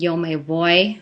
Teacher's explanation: V is pronounced more of like a bilabial fricative, yo me voy, so it has a little bit more closure.